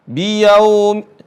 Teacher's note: Kalau ya sukun itu mengarah kepada huruf i. Kalau waw sukun mengarah kepada huruf u, bukan o ya.